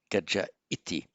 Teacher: the ah with visarga followed by the I, the visarga drops, so you get the vowel hiatus